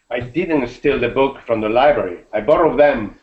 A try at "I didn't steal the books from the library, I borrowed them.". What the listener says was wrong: Ah, but you are stressing library, can you hear? You're saying, I didn't steal the books from the library, I borrowed them.